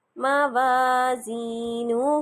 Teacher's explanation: میم کو میں لمبا نہیں کر رہی، واو کو کر رہی ہوں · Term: واو مدہ